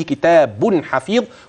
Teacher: هتبين نون التنوين في قوله كتاب حفيظ وصلا